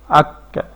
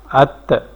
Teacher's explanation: کمزوری سے ٹھہریں گے یہاں پہ جس سے سانس جاری رہ سکے، جو سانس جاری رہے تاکہ ہماری جو آواز ایک بند ہو رہی ہے ہمیں جو مشکل ہو رہی ہے اس میں آسانی ہو جائے. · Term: ہمس